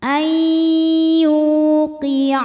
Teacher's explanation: maka huruf ya ini kita panjangkan Cukup dua harakat saja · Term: Mad Thobi'i